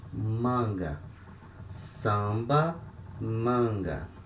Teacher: letter a before letter n and they are at the same syllable so we have the nasal sound